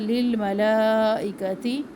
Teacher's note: مد ہے یہاں پر، لمبا کرے 3 الف کے برابر